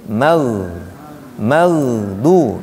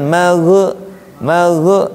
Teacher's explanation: dia bukan huruf mantul jadi mag lurus ke depan